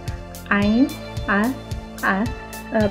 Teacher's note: It has the pronunciation of a. Ain is pronounced with the central throat.